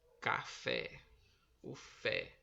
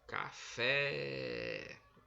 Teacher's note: Café, que foi pronunciada com mais força, com mais intensidade, foi a sílaba fé. Então a sílaba tônica é a última.